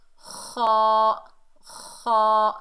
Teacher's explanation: خا فل ماؤتھ ہے، اسے موٹا ادا ہوگا